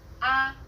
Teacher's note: The first tone is steady with a high pitch. · The fourth tone falls sharply and quickly from a high pitch.